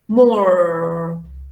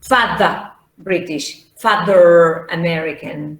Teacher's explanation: So the Americans use a little bit the ra, but not so much either, okay? The British don't.